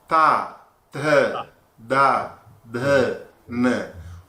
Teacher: the tip of the tongue touches the teeth only. So they are called dental >> teeth and the tongue t the d.